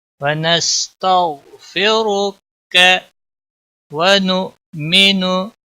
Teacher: हमजा को थोड़ा झटके के साथ पढ़ेंगे, नू नहीं पढ़ना है।